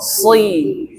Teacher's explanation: si hampir seperti sui tapi bibirnya tidak bergerak. · Sod ini kan punya sifat isti'la ya, pangkal lidah naik. Namun ketika dia berharokat kasrah, kadar ketebalannya berkurang. Nah, makanya ketika kasrah bunyinya si.